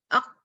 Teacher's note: شدت سے بند کیا پھر کلکلا کر دیا اس کے ہوا رسے کو کھولنے کے لیے